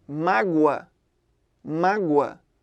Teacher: Esse O sai com som de U. Então, nessa situação, esse O que sai mais fraquinho vai se comportar como semivogal e o A continua sendo vogal. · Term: ditongo crescente